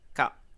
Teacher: Ce qui donne ka Si on regarde du côté des tonalités, il n'y a toujours pas de signe de tonalité. La syllabe se termine par une voyelle courte, donc elle est morte. Et la consonne initiale est moyenne, donc le ton est bas.